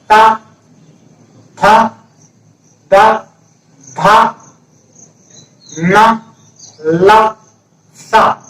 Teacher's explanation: तो दांतों से जीभ का आगे वाला भाग दांतों को छू रहा होगा।